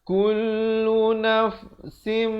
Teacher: tanwin bertemu mim masuk beserta dengung 2 harakat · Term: idgham bi gunnah